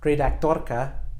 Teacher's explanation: you can hear it's just a single vibration you should almost hear your tongue click in the roof of your mouth